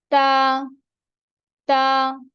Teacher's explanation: ता में जो जुबान की नोक है वो जो ऊपर वाले सामने के दांत है सामने के जो दो दांत होते हैं ऊपर वाले इनकी जड़ के साथ लगती है जबान की नोक तो ता अदा होती है ता ता ओके